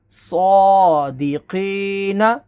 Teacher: ق صادق قف حروف مستالیہ ہے اسے بھی موٹا پڑھیں گے یا ساکن سے پہلے زیر ہو تو یا مدہ ہوتی ہے اسے ایک الف کے برابر کھینچتے ہیں